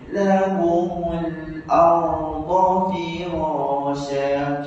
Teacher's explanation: Huruf ra ni dia bukan huruf syiddah. Jadi tak boleh baca R Allah. Kena baca hidup